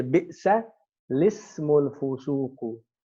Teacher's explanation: the hamza is not pronounced. And we say lismiyatu.